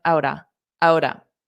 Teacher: So out of can combine together and sound like outa